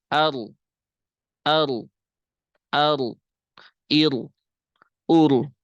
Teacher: tanpa takrir adalah menempelkan ujung lidah ke langit-langit